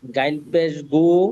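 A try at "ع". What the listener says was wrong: এটা গাইন না তো, নক্তা তো নেই। হ্যাঁ, আইন।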